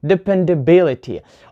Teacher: So here stress is on B, because this is the third syllable from the end.